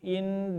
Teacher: in ditahan, dilamakan gunnah namanya ya. Atau diberikan nama juga oleh para ulama at-tarakhi.